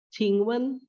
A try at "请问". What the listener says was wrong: 请问 nya ditekan, Bu.